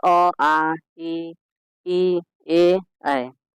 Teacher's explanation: जिन स्वरों के उच्चारण में ओठ वृत्तमुखी या गोलाकार नहीं होता है, जैसे आ ई ए ऐ। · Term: आवृत्तमुखी